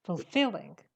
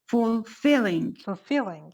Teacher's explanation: the stress is on the second syllable fulfilling